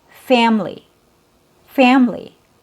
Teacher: here the schwa is so weak that it's removed. It disappears. So when you listen to native speakers, when they say this word with 3 syllables, you'll only hear 2.